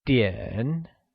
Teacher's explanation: the measure word for time is DN and it is pronounced using a falling rising tone